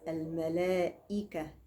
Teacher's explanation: من اللام المضمومه للام الساكنه لام القمريه مباشره واسقطنا همزه الوصل